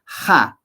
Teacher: en quechua la H suena como la j y no es eh Como en el Castellano muda Entonces se pronuncia Ja la i es libre i c la